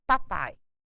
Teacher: O A é mais forte, o som do I decresce. Por isso ele é decrescente. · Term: ditongo decrescente